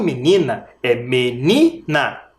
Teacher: menina é paroxítona a penúltima sílaba tônica